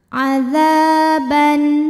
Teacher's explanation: Maka cara bacanya dipanjangkan dzalnya 2 harokat saja. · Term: matobi'i